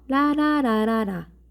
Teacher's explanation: 공기가 이렇게 자연스럽게 부드럽게 흘러나와서 나는 소리인데 혀 중앙이나 양 옆으로 공기를 흘려보내면서 나는 소리예요. 우리말에서는 딱 리을 뿐입니다. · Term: 유음